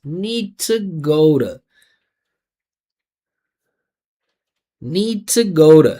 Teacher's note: Use the schwa, say need to. Listen to the vibration. I didn't say nita.